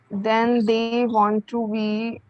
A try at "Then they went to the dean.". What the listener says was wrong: Then they went to the dean. Where is want over here? Want कहाँ है? Then they what?